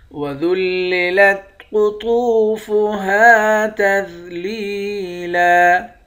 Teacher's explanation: قاف اور طاء کو موٹا پڑھیں گے، واو کے ساتھ ملا کر ایک الف کے مقدار کھینچ کر پڑھیں گے۔ ہا کے بعد الف ہے، اس کو بھی ایک الف کے مقدار کھینچیں گے۔